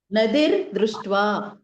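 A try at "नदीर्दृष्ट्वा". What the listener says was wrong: నదిర్ కాదండి ద కి హ్రస్వం ఎందుకు అయిపోయింది నదీ ఉందది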